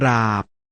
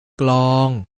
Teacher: ออกเสียงพยัญชนะตัวหน้าควบกับรเรือลลิงวแหวนเป็นเสียงควบกล้ำ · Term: อักษรควบแท้